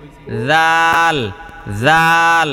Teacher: জাল উচ্চারণ করতে জিহ্বাটা একটু বের করতে হবে।